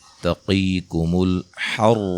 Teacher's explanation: قاف کو موٹا ادا کریں گے، یا مدہ ہے، را کو موٹا ادا کریں گے